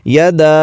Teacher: یدا، یہاں پر دیکھیے مد ہے اور اس کو مد منفصل کہتے ہیں، اس کو آپ 2 سے 4 الف تک لمبا کر کے پڑھیں گے